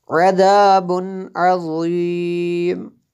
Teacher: عذاب عظیم، یہ دیکھیں یہاں پہ میں نے عذاب عظیم غنہ نہیں کیا، کیوں کہ نون جو ہے تنوین ہے، دو پیش ہے نا، تنوین ہے، تنوین کے بعد عین حروف حلقی میں سے ہے، اس لیے یہاں پہ غنہ نہیں کریں گے